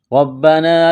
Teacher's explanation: را کے اوپر زبر ہے تو را کو موٹا کریں گے